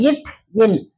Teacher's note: நாவுடைய நுனி பகுதி வந்து அன்னத்தின் நுனி பகுதியை பொருந்துவதால் பிறக்கின்றது